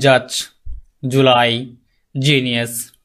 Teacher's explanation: এটা মোটামুটি স্মুথলি উচ্চারণ হবে। এটা পোস্ট অ্যালভিওলার সাউন্ড। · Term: জ সাউন্ড